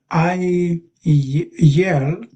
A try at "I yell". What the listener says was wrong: that's how you pronounce it. Yeah, you did it. Very good.